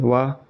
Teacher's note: व का उच्चारण करते समय ऊपर के दांत निचले होठ को स्पर्श करते हैं। इसलिए इसे दंतष्टय या दांत प्लस हो ध्वनि कहा जाता है। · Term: दंतोष्ठय ध्वनि